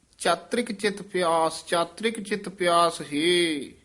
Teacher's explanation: ਚਾਤਰਕ ਰਾ ਪੂਰਾ ਨਹੀਂ ਬੋਲਣਾ